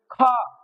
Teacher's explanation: जब ख कहा तो वायु निकल के हाथ पर लगी। तो क हो गया हमारा अल्पप्राण और ख हो गया महाप्राण।